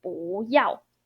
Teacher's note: Well, this is a good phrase to like practice your tonal modification for 不 character. This part, as we explained, 要 is fourth tone. Your 不 need to pronounce as second tone.